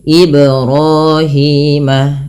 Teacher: menambahkan Hamzah yaitu misalkan IB kemudian putus nah ini juga salah yang betul adalah dia memantul tanpa menambahkan Hamzah